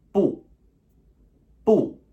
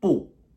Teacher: b u fourth tone falling sharp